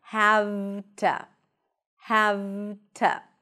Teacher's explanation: the to, when it's unstressed, is reduced to a schwa